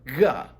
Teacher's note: GH makes what's known as the voiced velar fricative, ga. Or it might be devoiced, I don't know.